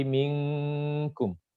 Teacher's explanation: Dengungnya itu hampir ke NG untuk qaf dan kaf saja. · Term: ikhfa yang adna